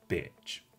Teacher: the tongue lifts ever so slightly towards what we call the front position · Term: I sound